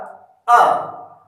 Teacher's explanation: ह्रस्व स्वर जिसकी मात्रा जो है वो 1 होती है, अर्थात जिसको बोलने में कम समय लगता है और उसकी जो कालावधि है वो इस प्रकार से आप लोग समझ सकते हैं, जितना समय हमारी एक पलक झपकाने में लगता है उस कालावधि को हम जो है ह्रस्व स्वर कहा जाता है, उसको ह्रस्व स्वर कहते हैं।